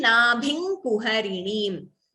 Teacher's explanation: the Anuswara is replaced by the Anunasika Akshara of that Varga